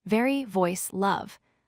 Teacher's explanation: V equals teeth on lower lip plus voice vibration.